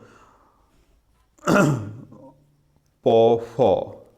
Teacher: ফ হচ্ছে ওষ্ঠধ্বনি, ওষ্ঠ, মহাপ্রাণ এবং অঘোষ